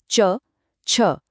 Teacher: अब गले से थोड़ा सा आगे आते हैं, तालू की तरफ। च वाली जो लाइन है वो तब बनती है जब जबान का बीच वाला हिस्सा मुंह की छत यानी हार्ड पैलेट को टच करता है।